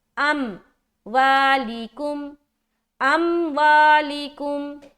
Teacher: حمزہ کو میم سے ملا رہے قلقلہ نہیں ہونا چاہیے بالکل، بلکہ صرف ملائیں گے، جدا نہیں کرنا۔